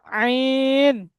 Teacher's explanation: গলার মধ্যখান থেকে উচ্চারণ করেন, আইন